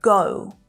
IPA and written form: gəʊ (GO)